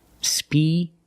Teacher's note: Both vowels are the long E like green beans.